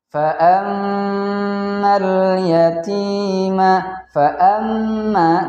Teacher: Fa'ammal yatima, fa'amma, di situ ada gunnah, yaitu ada mim tasjid, maka hukumnya gunnah, kita tekan atau kita tahan 4 harokat